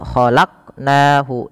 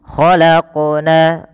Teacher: pada lafal qaf ini suara bunyinya dipantulkan. Khalaqu, ya, yaitu dimana kita kenal dengan istilah namanya qalqalah.